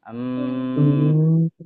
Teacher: gunah itu kan keluar dari rongga hidung ya dari rongga hidung bukan dari mulut